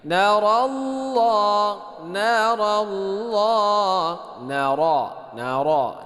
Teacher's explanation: Narallah nara ini dibaca tebal, ya. Ra-nya dibaca tebal.